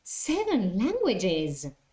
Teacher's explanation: pay attention to the intonation there you have to show surprise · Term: Echo questions